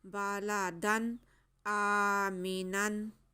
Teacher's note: यहाँ हमज़ा पे हमारे पास खड़ा ज़बर है, इसको खींच के पढ़ेंगे दो हरक़ात के बराबर।